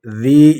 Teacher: ذی یا مدہ یا ساکن آگے زیر ہے، ایک الف کی مقدار اس کو کھینچیں گے۔